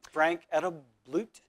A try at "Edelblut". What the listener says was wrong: Edelblut, the T is silent. The T is silent.